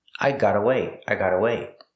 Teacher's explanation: Luckily I got away. The T in got is a fast T because it's between vowels.